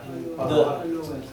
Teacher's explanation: Y la D del inglés termina en el alveolo, acá arriba, detrás de las paletas.